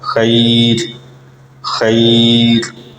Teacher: تو جب ہم نے یہاں پر رکنا ہے تو را کو ساکن کر دیں گے۔ اب را ساکن ہوئی اور اس سے پہلے ہم نے دیکھا کہ یائے ساکنہ موجود ہے، تو اس کا مطلب یہ ہوگا کہ اب اس را کو باریک ادا کیا جائے گا